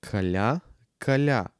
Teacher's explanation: буквата Я означава нищо повече от звук А, но след мека палтална съгласна